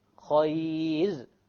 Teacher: If it's silent, and the letter before it is a silent ya, then in this case, we don't care even if there is a fatha. It will be light. · Light, because there is a ya before it.